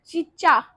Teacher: चा जब शब्द हम बोले तो ये क्या हो रहा है, जो जीभ है वो क्या चा, तो ये क्या है, तालब। हमारी जीभ है वो तलबे को टच कर रही है।